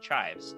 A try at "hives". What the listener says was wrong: Yeah, not chives. Not you put on the under potato. No C. Hives. Not chives.